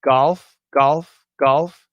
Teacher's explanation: when it's a hard G, like in golf, golf, golf, yeah, there's a bit of vibration